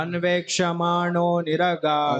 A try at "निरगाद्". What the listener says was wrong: देखिए मैंने क्या बोला था, निरगाद, दैट मींस द विद हलंत, उसके बाद आ लगाना पड़ेगा।